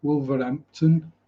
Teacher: you do have the T in Wolverhampton, but you don't have the H.